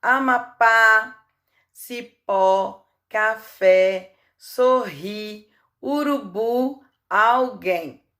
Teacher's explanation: ou tônica vamos lá Amapá Cipó o café sorrir urubu alguém todas as palavras a sílaba mais forte é a última sílaba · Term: oxítonas